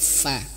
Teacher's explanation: huruf fa itu di sini ya, di bibir bawah menyentuh ujung gigi seri atas